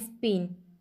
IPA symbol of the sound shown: p, t, k